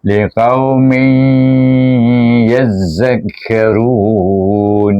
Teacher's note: walaupun nun dihazafkan dia masih berdengung pada huruf ya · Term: idram naqis, idgham ma'al gunnah